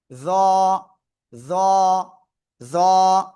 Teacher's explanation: জিহ্বার আগা উপরে 2 দাঁতের আগায় লাগবেন, লাগিয়ে একটু মোটা আওয়াজে আপনার উচ্চারণ করতে হবে